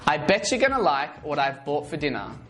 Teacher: the T in what becomes a flat T sound which sounds like a d as it is surrounded by two vowels